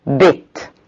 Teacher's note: front close spread as in bit-bit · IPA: /bɪt/